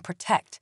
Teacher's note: The sound of the O in protect is called schwa, the generic and nondescript vowel that very commonly occurs in unstressed syllables.